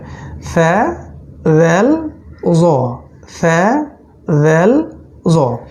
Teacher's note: জিহ্বার অগ্রভাগ এবং দাঁতের নিচের অংশ থেকে তিনটা অক্ষর বের হয়